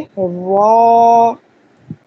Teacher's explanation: را ادا کرتے وقت اس کو پر پڑھنا ہے ڈبل را کی طرح، کیونکہ اس میں تکرار ہے.